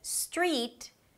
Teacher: Adding vowels at the beginning of words that begin with st. So instead of 'street', you'll hear 'estreet'.